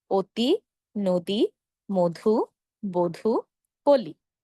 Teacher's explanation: জিনিসগুলো থাকার কারণে আমরা যখনই দেখব এমন তখনই আমরা কি করব শুরুর অ এর সঙ্গে মনে মনে একটি ওকার দিয়ে উচ্চারণ করব